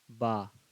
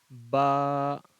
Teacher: با، یعنی جو دونوں ہونٹ ہے اس کی تری والا جو حصہ ہے، یعنی کہ آپ با کو غور کیجئے پڑھنے میں اور دیکھیے جو دونوں ہونٹ کا کون سا حصہ یہاں پہ سٹ رہا ہے، اور پہلے ہونٹ مل رہا ہے اس کے بعد کھل رہا ہے